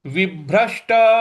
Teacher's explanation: यहां पे जो श है उस पर भी हमको बल लगाना है